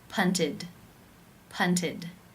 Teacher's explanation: This means it is case 3, where the ED is pronounced as the I as in sit with the D sound